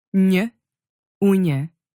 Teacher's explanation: You get that quick y sound at the end as soon as your tongue moves on to pronounce the next vowel.